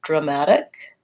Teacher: So it's dramatic, short, long, short. The dra, the first A says vowel schwa because it's unstressed. And then we have vowel a, like in black cat.